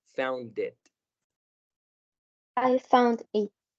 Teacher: Vamos a marcar un poquito más la D, que suene muy duro ahí entre found e it